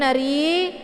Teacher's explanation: rinya dibaca tipis karena harakat rinya adalah harakat kisra